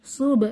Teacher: বা হচ্ছে কলকলার হরফ কলকলা করবো